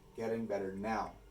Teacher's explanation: There are 3 stressed syllables here, getting, better, and now, and there's only 2 unstressed syllables